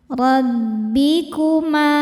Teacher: ro dibaca tafkhim karena berharokat fathah, cara bacanya tebal. Rabbikuma, ma mad tabi'i sebab ada alif didahului fathah, maka mimnya panjang 2 harokat.